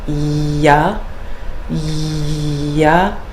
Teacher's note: really pushing the middle of the tongue up to the palate